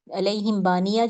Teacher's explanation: میم کی آواز کو اپنے ہونٹوں میں چھپا کے تھوڑی دیر ہولڈ کروں گی، اور یہاں پہ میں اس کو دوں گی اخفا کروں گی، چھپاؤں گی، اخفاء شفوی کروں گی۔